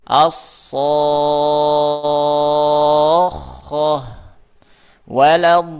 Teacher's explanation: Waladdallin. Ya, jadi pas perpindahan antara mad ke tasydidnya baru ditingkatkan suaranya, dinaikkan